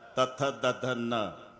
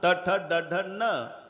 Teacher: न म्हणताना नळाचा दातालाच, बाणाचा न म्हणताना टाळूला.